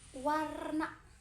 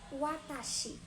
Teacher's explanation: bibir dibulatkan dan lidah dinaikkan ke langit lunak